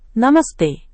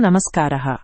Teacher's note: విసర్గం తర్వాత అఘోష వ్యంజనం వస్తే విసర్గం మారి యస్ అవుతుంది. అఘోష వ్యంజనాలు ఏవంటే క ఖ ఠ త థ ప ఫ ఛ ఛ ష ష స ఇవి అఘోష వ్యంజనాలు విసర్గం తర్వాత ఇవేవైనా వస్తే విసర్గం మారి యస్ అవుతుంది. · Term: సత్వ సంధి